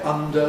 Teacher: We all know that you make an [n], turn it into a [d], and then release the [d]. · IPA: ˈʌndə